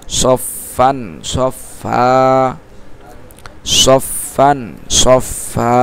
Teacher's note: দুই জবরের বামে ওয়াকফ করলে এক আলিফ টানিয়ে পড়তে হয় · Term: মধ্যে আওয়াজ